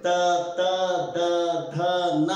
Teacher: ಈ ಅಕ್ಷರಗಳನ್ನ ನೀವು ಅಂದು ನೋಡ್ರಿ, ತ ತ ದ ಧ ನ ಅನ್ನಬೇಕಾದಾಗ ಆ ನಾಲಿಗೆ ಹಲ್ಲಿನ ಸಂಧಿಯಲ್ಲೇ ಹೊಳ್ಳಾಡ್ತದೆ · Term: ದಂತವರ್ಣಗಳು